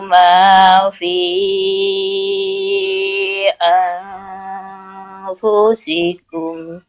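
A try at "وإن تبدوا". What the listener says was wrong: Wa in tubdu, jangan tubdu ya, nggak perlu dipantul-pantulan gitu Bu.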